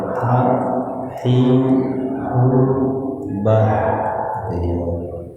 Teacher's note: makhrajnya ha di wasatul halqi, ya di tengah-tengah tenggorokan